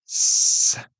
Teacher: Did you feel there was no vibration with s? That vibration with z is voicing.